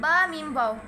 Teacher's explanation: बा दोनों होटों के तर हिस्से से मीम दोनों होठों के खुश्की से वाव दोनों होठों की गुलाई से